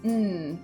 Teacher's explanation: the tip of my tongue is up on my alveolar ridge or that gum ridge above my upper teeth. If you place your hand under your nose while creating an n sound you'll feel again that breath coming out on the back of your hand but nothing coming from your mouth.